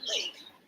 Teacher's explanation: Sure, for lateral sounds, like the L in lake, the middle of the tongue is lowered to create a channel. This allows air to flow around the sides of the tongue, which are pressed against the roof of the mouth.